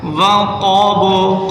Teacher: وقب، قاف کو موٹا کریں، با پر قلقلہ کریں